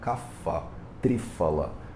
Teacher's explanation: eles pronunciam esse P como F, como o F de faísca